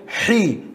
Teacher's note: from the middle of your throat you will say حي